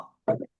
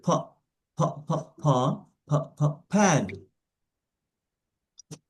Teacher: দুই ঠোঁট একত্র করে বাতাস বেরোবে